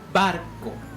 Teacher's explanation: Barco lleva el acento en la sílaba bar, que es la penúltima sílaba. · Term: acento prosódico